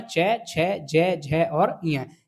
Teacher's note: तालु की सहायता से जो वर्णों का उच्चारण होता है वो वर्ण होते हैं आपके तालव्य वर्ण